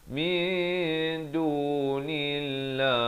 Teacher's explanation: perkataan Allah yang datang sebelumnya huruf berbaris kasrah dibaca nipis